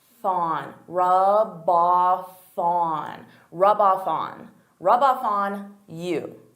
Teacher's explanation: So here I'm taking the F from off and I'm adding it to on.